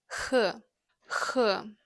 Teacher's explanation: It's a scratchy sound from the back of your throat.